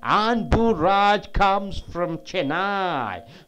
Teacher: Chennai is a noun. So Anburaj comes and Chennai should be stressed more. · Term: content word